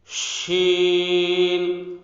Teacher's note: بڑے شین کے اندر آواز منہ کے اندر پھیل جائے گی